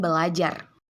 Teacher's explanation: Nah, apabila tidak terjadi disimilasi, maka kata yang dihasilkan seharusnya berajar, bukan belajar. Namun, karena ada dua bunyi R, maka R yang pertama didisimilasikan menjadi L, sehingga menjadi kata belajar.